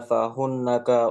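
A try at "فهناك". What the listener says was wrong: Fahunaka, jangan ada tasydidnya. Fahunaka dibaca biasa saja.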